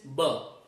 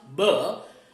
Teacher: so we call it b but the pronunciation is ba so when you pronounce bur you should be able to feel a vibration on your throat so if you feel that that is known as the voice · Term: voice sound